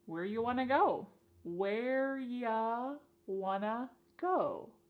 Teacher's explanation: You becomes y and want to becomes wanna. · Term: similar reduction